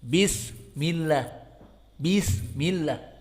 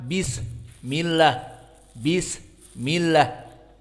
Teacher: sin di sini dia harus hams, harus dibuang dari udara yang keluar